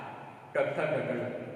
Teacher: ನಾಲಿಗೆ ಹಿಂದೆ ಮಡಚಿ ಹೇಳ್ತೇವೆ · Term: Murdha